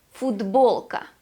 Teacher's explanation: Voiceless t is pronounced as d, as a voiced d sound. Футболка. because it is followed by the consonant b.